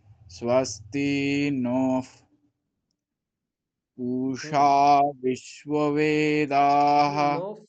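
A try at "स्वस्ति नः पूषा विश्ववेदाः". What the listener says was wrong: এরকম থেমে গেলে হবে না একসাথে স্বস্তিফোষা বলুন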